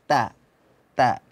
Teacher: ta itu makhrajnya ada di ujung lidah, berada di urat gigi. Urat gigi itu di belakang gigi seri paling atas.